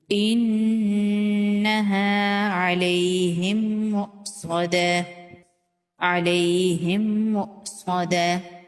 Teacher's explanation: میم ساکن کو میم مشدد کے اندر مدغم کر دیں گے، میم ساکن کو میم مشدد کے اندر ملا دیں گے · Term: ادغام مثلین